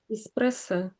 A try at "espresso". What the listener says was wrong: So, but at the end is we normally say espresso, and you're saying espressa. You're saying espressa. small difference, really. It's just sort of it's not quite so obvious at the end. So if I just say it again, espresso.